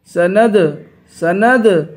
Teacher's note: سند دال پہ قلقلہ کریں گے